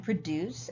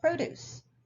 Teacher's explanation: have the same spelling but they have a different stress pattern produce the verb is stressed on what we call the second syllable whereas the noun produce is stressed on the first